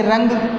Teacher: अनुस्वार का उच्चारण सिर्फ नाक द्वारा ही किया जाता है, क्योंकि अनुस्वार एक पंचम वर्ण का ही रूप है।